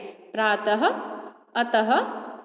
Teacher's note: इसका उच्चारण ह की तरह होता है, जैसे प्रातः, अतः आदि। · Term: विसर्ग